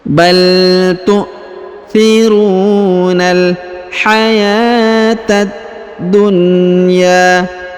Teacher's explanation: huruf ta langsung disambung ke alif lam syamsiyah ini yang berharokat tasdid pada huruf da. Huruf ta langsung sambung ke sini, ditahan dan ditekan.